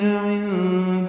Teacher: عند بعین وسط حلق سے ادا ہوگا، نون ساکن کے بعد دال آنے کی وجہ سے اخفا ہے، نون کی آواز چھپائیں گے